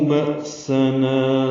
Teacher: بأسنا حمزہ ساکن جھٹکے سے نا الف مدہ ہے.